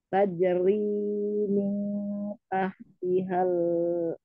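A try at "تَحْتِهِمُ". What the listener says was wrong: Tahtihimul. Masih tahtihal, bedanya domirnya saja yang berbeda. Ada ha, ada hum. Di sini tak, tak, tihimul. Tahtihimul.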